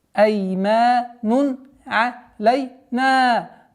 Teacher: правило изхар, четкое произношение танвин, дамма с буквой айн, гортанный звук